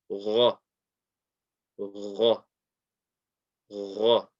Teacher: the Ghain is a heavy letter, so we have to have that heavy quality, and the sound comes from the top of the throat.